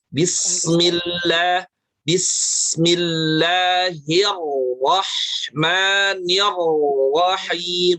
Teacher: Nah, walaupun sebelum huruf ro itu ada kasroh, bismillahi itu kan kasroh, tetapi karena ro-nya yang bertasydid berharokat fathah, maka ro-nya dibaca tafkhim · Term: ro tafkhim